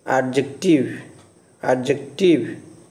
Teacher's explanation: The word adjective has 3 syllables: adjective. The stress on first syllable, not in the second syllable.